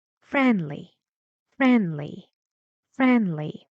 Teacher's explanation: in the middle, not rising, not falling. Friendly, friendly, friendly. No rising or falling intonation.